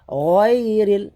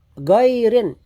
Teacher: huruf ghain isti'la. Memang tebal. Banyak mereka membaca gairin.